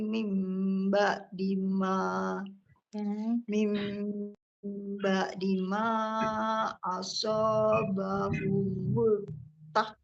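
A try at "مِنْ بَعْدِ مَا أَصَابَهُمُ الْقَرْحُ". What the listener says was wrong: Kor. Kor. Bukan ta tapi kof. Kor. Kor.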